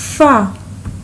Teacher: Touch your upper teeth to the wet part of the lower lips, whereas the most of the people read it by touching the upper teeth to the dry part of the lower lips, where it's wrong.